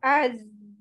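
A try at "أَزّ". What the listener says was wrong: Az. Oke, okay, A-nya jangan panjang ya. Langsung ditasdid.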